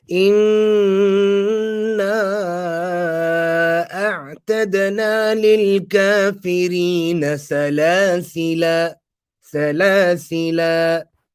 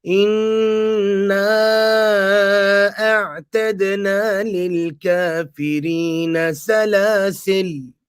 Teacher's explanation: some pronounce it with a mad for the duration of two vowels, whilst others pronounce it with a sakoon. So some would recite it as Inna a'tadna lil kafirina salasila.